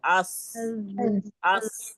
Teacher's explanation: ज जब हम बोलते हैं ना ज, अज, अज, अस, अस, देखिए गौर करिए जबान कहाँ लग रही है, अस, अस। तो जबान नीचे के दांतों के पीछे लग रही है और हमारे ऊपर नीचे के दांत जो है वो करीब आ जाते हैं।